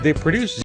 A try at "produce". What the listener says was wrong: produce 아니에요. produce. 강세 뒤에 있습니다.